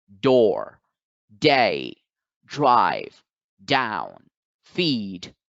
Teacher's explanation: however this sound also requires this training of the vocal chords it is voiced so therefore the sound that is represented by a lowercase d is d sound